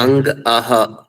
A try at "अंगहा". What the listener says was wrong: हाँ अंगहा, सही बात।